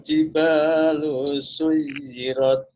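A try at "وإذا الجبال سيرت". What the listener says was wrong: Jibalu, lu-nya pendek saja.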